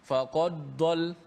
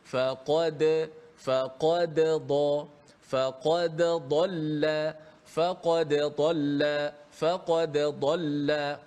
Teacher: Dia seakan-akan bunyi bunyi idgham. Bunyi dal tu dimasukkan ke dalam dad. Ah ni contoh bunyi yang tidak tepat seperti faqaddol.